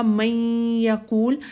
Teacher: نون کی صفت جو ہے وہ باقی رہتی ہے، اور ہم غنہ کرتے ہوئے اس کو اس میں داخل کرتے ہیں